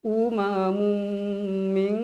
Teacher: tanwin bertemu dengan huruf mim yang bersabdu jadi kita wajib baca dalam Qada dua harakat dengan bacaan yang dengung